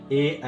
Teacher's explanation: ए ऐ का कंठ तालव्य होता है, कंठस्य तालव्य होता है।